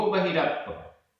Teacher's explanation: बहिर, बहिर, र में छोटा अ, अप छोटा आ, दोनों मिलकर बड़ा आ हो गए, लेकिन आधा पा और पूरा पा ये संयुक्त अक्षर है। संयुक्त अक्षर से पूर्व जो दीर्घ स्वर है वह ह्रस्व हो जाता है, छोटा हो जाता है, इसलिए वापस छोटा हो गया।